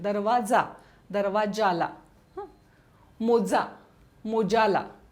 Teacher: तालव्य उच्चार बदलून दंत तालव्य होतो.